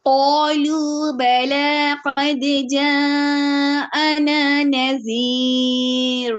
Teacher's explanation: قاف موٹا الف مدہ موٹا پھر لو ہونٹ باہر کی طرف آ جائیں گے اور گول ہوں گے پھر بلا با میں آپ کے ہونٹ کھلیں گے لا میں